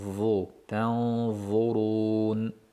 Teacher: Tanzu tilimizning uchi yuqori tishlarimizning uchi bilan birgalikda chiqadi.